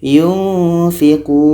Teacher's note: nun mati bertemu fa ikhfa hakiki dan dibaca dengung. Kun, panjang waw mati.